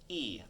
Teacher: angry cat kind of sticks its butt in the air e the tip of my tongue is still down out of the way but the back of my tongue lifts up like an angry cat